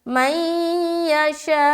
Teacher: ادغام ناقص یعنی کہ غنہ کے ساتھ ملانا ہے